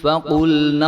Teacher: قاف جو ہے وہ موٹا حرف ہے اور لام اور نون جو ہے وہ باریک حرف ہیں ، اور آگے ضاد جو ہے یہ موٹا حرف ہے، تو